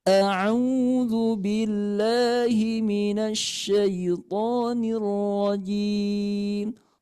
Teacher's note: tahan dulu ya, karena hamzah ini punya sifat karakter tertahan